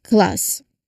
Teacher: the K sound is made at the back of your throat and as you release it your tongue needs to swiftly move forward for the L sound. So this requires coordination between the back of your tongue and the front. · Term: C cluster